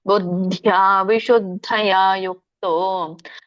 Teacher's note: ಬುದ್ಧದ ಮೊದಲು ಅಲ್ಪಪ್ರಾಣ ಹೇಳಬೇಕು ಆಮೇಲೆ ಆಮೇಲೆ ಬುದ್ಧಿಯ ಹೇಳುವಾಗ ಮಹಾಪ್ರಾಣ ದ ಹೇಳಬೇಕು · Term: ಮಹಾಪ್ರಾಣ ಧ